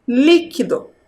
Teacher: qual é a sílaba mais forte dentro dessa palavra é a sílaba li a primeira sílaba